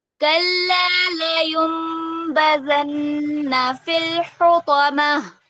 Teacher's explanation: نون ساکن کے بعد با ہے اور درمیان میں چھوٹی سی میم ہے، تو اقلاب کا قاعدہ ہے، نون کی آواز کو ہم میم سے بدل دیں گے